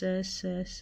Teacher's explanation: संघर्षी व्यंजन जिन व्यंजन वर्णों का उच्चारण करते समय दो उच्चारण अवयव इतने निकट आ जाते हैं कि वायु निकसों का मार्ग इतना संकरा हो जाता है कि वायु को बाहर निकलते समय संघर्ष करना पड़ता है।